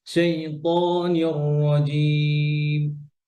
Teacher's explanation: ততে বাতাস বের হবে না, সেই ত, যেন সেই থ না হয়।